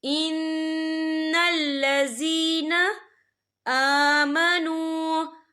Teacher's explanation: حمزہ کے پر کھڑی حرکات ہے، تو ہم یہاں 2 یا 3 عدد کے برابر کھینچیں گے۔ اور آگے دیکھیں آمنو، یہاں پہ واو مدہ ہو رہا ہے، واو ساکن ہے، واو ساکن سے پہلے پیش ہے، تو ہم یہاں 2 یا 3 عدد کے برابر کھینچ کے پڑھیں گے۔